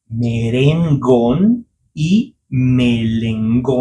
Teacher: the R you pronounce it as L and the L as R.